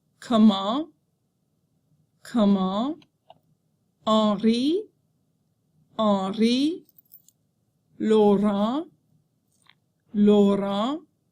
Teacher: The letters A-N and E-N usually represent a nasal vowel sound. Be sure not to pronounce the N after the nasal vowel.